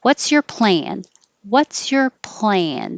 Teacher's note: plan gets longer but not higher